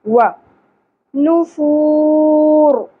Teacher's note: حروف یمنو میں سے، تو یہاں پر ادغام مع الغنہ ہوگا، تنوین کی آواز کو ہم واو کے ساتھ ملا دیں گے اور غنہ بھی کریں گے